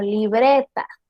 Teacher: Si digo libreta, el acento está principalmente en bre.